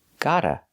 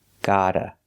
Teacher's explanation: The T with got and the T with to link together, making one sound. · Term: fast D